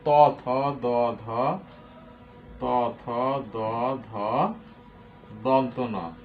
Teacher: তাহলে স্বরবর্ণ সবগুলো লেখা হয়ে গেল। এরপরে আছে দন্ত ধ্বনি। কোনগুলো? দন্ত, দাঁত থেকে উচ্চারণ, ত, থ, দ, ধ, ত, থ, দ, ধ, দন্ত ন।